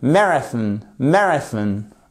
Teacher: Vous avez l'accentuation sur la première syllabe